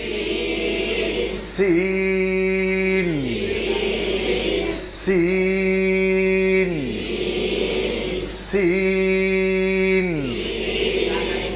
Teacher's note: इस हरफ की आवाज में सीटी की आवाज होगी नंबर दो आवाज लंबी होगी